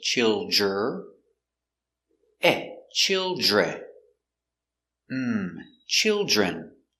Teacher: the Dr makes a j sound so use that J